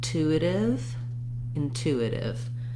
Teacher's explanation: in intuitive, we have second syllable stress, which means we have a clear oo vowel. And again, we have this first T has a puff of air.